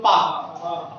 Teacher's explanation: जैसे आप कहते हो पा, तो जब पा कह रहे हो ना तो दोनों ओंठ मिल रहे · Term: ओष्ठ्य